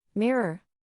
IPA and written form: ˈmɪr.ər (Mirror)